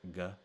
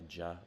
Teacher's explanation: one way you can tell Egyptian apart from a lot of other dialects is it has the characteristic g sound in words where most other dialects have a j